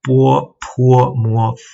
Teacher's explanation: you can clearly hear that there's a oo sound in between the B and the O